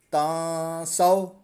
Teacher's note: تا نون زبر تاں، نون ساکن کے بعد سین حروف اکفا میں سے، تو غنہ کریں گے۔ یہاں پر اکفا کا قاعدہ لگ رہا ہے۔